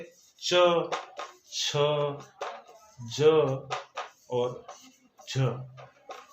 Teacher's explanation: स्पर्श संघर्षी, स्पर्श संघर्षी व्यंजनों के उच्चारण में मुख के अंदर के दो अंग, जीभ और कोई अन्य अंग आपस में पहले स्पर्श होते हैं और फिर उनमें रगड़ या घर्षण होता है, जैसे च, छ, ज और झ, यानी कि च वर्ग स्पर्श संघर्षी कहलाता है।